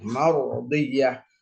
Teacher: Ro di sini juga mesti dibaca dengan tafkhim karena didahulukan oleh huruf berharokat fathah